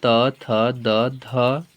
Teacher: दांत से बोला जाता है